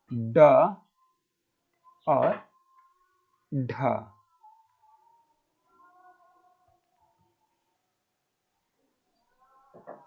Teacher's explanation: अग्र भाग यानी कि नोक वाला भाग एक झटके के साथ नीचे गिरता है उन्हें हम उत्क्षिप्त व्यंजन कहते हैं